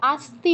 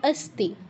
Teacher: আস্তি নয়, অস্তি। তুমি অকে আ উচ্চারণ করছো, ওটা একটু ঠিক করতে হবে।